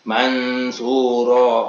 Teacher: maka dibaca ada dengung, samar dan dengung. Mansuro, oleh sebab itu kata dengung yang ada di pengikhfaan mansuro ini disebut gunah makhfi.